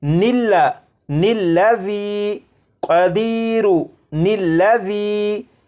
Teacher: اس کے بعد اس دوسرے لفظ کو پڑھیں گے الذی، اور ان دونوں الفاظ کو آپس میں ملانے کے لیے ان کے درمیان ایک نون کا اضافہ کریں گے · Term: نون قطنی